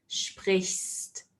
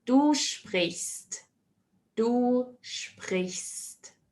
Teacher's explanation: Here, sometimes it often gets a bit difficult with the pronunciation because after the sh sound, it's immediately followed by an ST sound